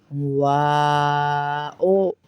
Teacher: واو میں بھی ہونٹ گول ہو جائیں گے.